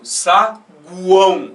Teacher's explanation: São 3 sons de base vocálica pronunciados de uma vez só na sílaba. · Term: tritongo